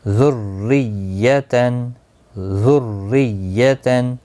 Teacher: را زیر کی وجہ سے باریک ہوگا۔